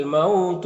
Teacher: یہاں پر واولین سے نرم آواز کے ساتھ جلد پڑھیں گے